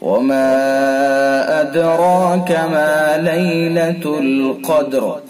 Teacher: مد منفصل ہوگا، 2 الف سے 4 الف تک اس کو کھینچ سکتے ہیں۔